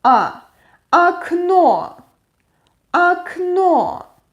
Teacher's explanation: The last O is stressed, so the first O is pronounced like A.